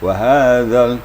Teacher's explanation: Dan juga gigi kita tidak boleh dirapatkan. Jadi gigi tetap direnggangkan sedikit, kemudian ujung lidah menyentuh papan gigi atas, maka keluarlah makhraj zal, lembut.